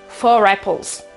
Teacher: la r appoggia aiuta transita è un link verso la vocale successiva